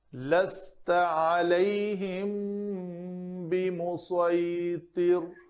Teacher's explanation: میم ساکن کے بعد با ہے تو اخفاء شفوی ہوگا